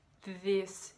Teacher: Il prononce le TH juste en faisant un Z, donc en utilisant que sa gorge.